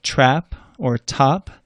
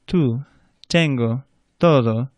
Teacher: Well, the letter T, when you pronounce the letter T, your tongue should be a little bit further forward by those front upper teeth, and it's a softer sound. You don't blow as much air through the T.